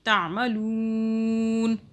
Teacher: لام پیش لو ہو رہا ہے نا، لو کھینچ رہے ہیں، ایسے تھوڑی پڑھ رہے ہیں کہ لو نہیں پڑھ رہے نا، لو پڑھ رہے ہیں. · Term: مدہ